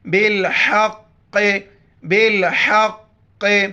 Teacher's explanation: کتاب بالحق، قوف موٹی الفاظ میں سے بڑی قوف ہے، موٹا کر کے پڑھیں گے. ہا گلے سے ادا کریں گے، قوف پر چونکہ شد ہے سختی سے اس کو پڑھیں گے.